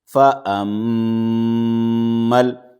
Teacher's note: 2 الف ہے، میم کے بعد والا الف اور اس کے بعد میں یہ لام سے پہلے والا حرف، یہ دونوں الف چھوڑ جائیں گے اور میم سے ڈائریکٹ لام کو ملا کر کے پڑھیں گے اور میم میں غنہ کریں گے